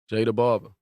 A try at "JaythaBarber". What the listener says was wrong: THA, not THE.